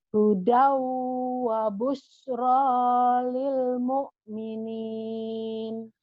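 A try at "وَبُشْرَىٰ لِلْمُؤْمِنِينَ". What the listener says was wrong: Hudau wa busyra lil mu'minin. Masih belum mantap sinnya, nanti ya dilatih aja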